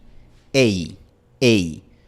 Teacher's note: El siguiente diptongo es EI. Empezamos en la posición de la vocal E y terminamos en la posición de la vocal I.